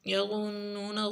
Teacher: غا کو موٹا پڑھیں گے نون کے اوپر غنہ کریں گے